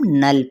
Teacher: نون کی حرکت کو لمبا بھی نہیں کریں گے، لیکن اب آگے جب ہم دیکھتے ہیں تو لام موجود ہے، لام ساکن، تو یہی اب نون کی حرکت کو یعنی نون زبر لام نل پڑھیں گے، ٹھیک ہے، لیکن لام کو موٹا نہیں کریں